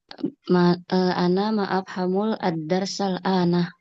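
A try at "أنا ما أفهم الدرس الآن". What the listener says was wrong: Nah gitu.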